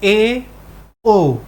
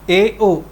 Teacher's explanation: ठीक तो यह इससे कम ऊंचाई पर होगा और मुख जो है आधा बंद होगा पूरा बंद नहीं है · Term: अर्ध संवृत स्वर